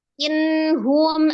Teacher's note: ada nun sukun ketemu dengan huruf ha ya, dibaca izhar halki karena ha adalah salah satu huruf al-halki dari tenggorokan bagian bawah.